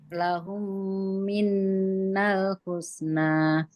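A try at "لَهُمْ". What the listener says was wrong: Ya, sip, mantap.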